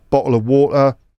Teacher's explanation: glottal stop, bottle of water